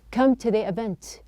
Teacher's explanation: the T is pronounced as a flap.